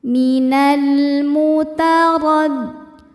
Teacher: Huruf ro dibaca secara tafkhim karena barisnya di atas yaitu baris fathah. Bacanya ro dibaca dengan tebal.